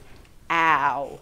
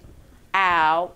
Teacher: It starts out big, ow, and goes small. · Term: diphthong